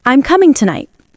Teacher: The tone falls at the end.